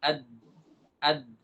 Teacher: Perbedaannya terletak pada sifatnya Dal memiliki sifat jahar